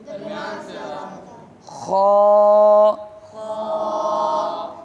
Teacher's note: یہ حلق کے اوپر والے حصے سے ادا ہوتی ہے